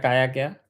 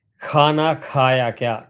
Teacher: Kha comes from the Nabhi with a gush of air. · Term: Mahaprana